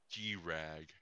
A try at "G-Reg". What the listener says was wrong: It's not G-Rag, it's G-Reg.